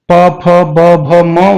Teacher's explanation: तो प वर्ग के अंदर जो है उसमें आप देखोगे उसको प फ ब भ म उच्चारण जब आप करोगे तो आपकी दोनों जो होठ हैं वो आपस में टच होंगे, तब ये आवाज निकलेगी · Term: ओष्ठ्य व्यंजन